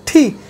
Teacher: তারপর আর হ্যাঁ, টি টি এটাও ধাক্কা দিয়ে বাতাসটা বের হবে, জিহ্বাটাকে উপর দিকে মোচড় দিয়ে এবার থাকবে, থি তো ধাক্কা দিয়ে ছাড়বো তখন ঠি বাতাসটা আমার হাতে কিন্তু বোঝা যাবে, আমি সামনে হাত না রাখলে বোঝা যাবে ঠি।